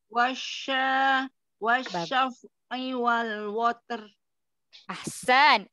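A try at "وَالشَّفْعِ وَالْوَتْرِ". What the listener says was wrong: WAnya mau lebih tipis lagi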